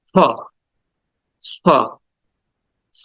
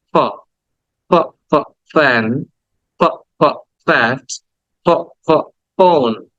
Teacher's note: আর এটা হচ্ছে ফ ফ ফ। উপরের দাঁতের অংশগুলো এখানে এসে এই নিচের ঠোঁটের মধ্যে এসে লাগবে। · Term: আসল ফ